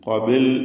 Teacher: ബാഇന് സുക്കൂൻ ഉണ്ട് കൽക്കല സുഹ്റ നൽകി ബഹിന്റെ സുക്കൂൻ ഹറക്കത്ത് പോലെ ചലിപ്പിച്ച് [സംഗീതം] വ്യക്തമാക്കണം വീണ്ടും കാഫും ദീർഘാക്ഷരമായ അലിഫും തഫ് ചെയ്ത് സ്വരഭാരത്തോടെ തടിപ്പിച്ചു പറയുക